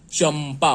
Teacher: तो च के ऊपर अनुस्वार है और अगला वर्ण प का है, इसलिए इसका उच्चारण म के जैसे होगा। म के उच्चारण में चूंकि ये ओष्ठव्य है, इसका उच्चारण ओष्ठ से होता है, इसलिए इसमें मुंह बंद हो जाता है पूर्णतया।